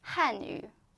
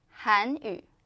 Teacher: it's almost the same, just the tone is different. So the first one tone is go down, and the second one tone go up. So it sounds similar, but meaning totally different.